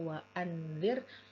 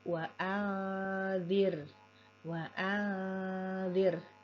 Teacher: 214 ada huruf nun nun sukun yang berhadapan huruf dalal artinya nun sukun ini dibaca samar dan disertai dengan dengung Jadi bukan dibaca waanzir tapi wair wair dan gunahnya disempurnakan nah